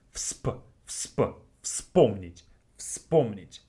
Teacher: Вспомнить has three consonants in the beginning. FSP.